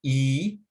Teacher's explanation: the long e sound e is produced near the top of the mouth